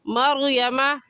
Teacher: یہاں پر را ساکن سے پہلے زبر ہے، تو را ساکن کو پر یعنی موٹا کر کے پڑھیں گے، اور موٹا کرنے کا طریقہ کہ آپ کے دونوں ہونٹ گول ہو جائے۔ مریمہ نہیں کہیں گے، بلکہ مریم۔